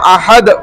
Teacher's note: تو لیکن وقف کی حالت میں کیا ہوگا, دو تنوین نہیں پڑھے جاتے ہیں. وقف میں اس کو ہم احد پڑھیں گے, نون نہیں پڑھا جا رہا, دو تنوین نہیں پڑھے جا رہے